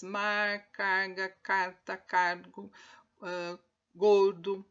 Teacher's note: Sempre há uma consoante retroflexa alveolar que sempre é vozeada, ou seja, sempre tem um movimento na glote.